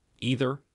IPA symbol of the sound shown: ð